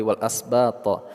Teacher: Karena kita berhenti di sini, ba, panjang dua sampai dengan enam harakat mad arid lisukun baru kita sukunkan huruf tha di akhirnya, qalqalah kubra, qalqalah kubra, pantulan kita baca secara keras